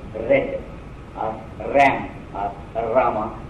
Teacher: if we say red or ram or rama, we utter with the tip of the tongue. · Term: R2